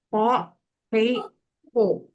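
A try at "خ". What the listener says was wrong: Nah, masih terlalu polos itu. Masih terlalu halus. Kho, iya geradakannya tuh coba tambahin. coba cara Bunda dia tadi agak agak ditekan. Kho, khi, khu gitu.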